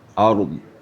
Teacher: Ard sifatnya ada istitalah memanjang pada geraham kita.